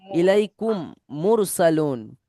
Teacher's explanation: মিম সাকিন ঈদগাম, মিমের পরে মিম আসবে, মিমকে মিমের সাথে গুণা করে পড়তে হবে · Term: ঈদগামে সাফাবি